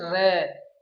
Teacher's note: हमारी जो जीभ है वो कंपित माने कांपती हुई आती है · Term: लुंठित